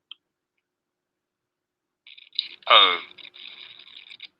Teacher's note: This sound is like saying the letter O. It begins with a ER or schwa and moves towards the OO sound found in good.